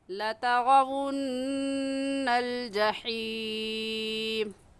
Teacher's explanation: लतरवुन्न पर हम गुन्ना करेंगे, क्योंकि नून मुशद्दद है